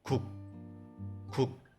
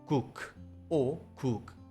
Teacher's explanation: It is not pronounced as 국 or 국 like English. Not saying the final K sound, you have to block the airflow and say 국 and stop.